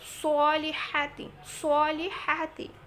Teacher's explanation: এখানে যেন সোয়াদ উচ্চারণটা একটু খেয়াল করে করবেন, মোটা করে উচ্চারিত হবে